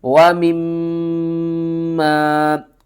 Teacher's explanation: میم مشدد ہے تو یہاں پر آپ نے غنہ کرنا ہے